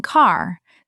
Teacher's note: the R is dropped because it comes after a vowel and no vowel follows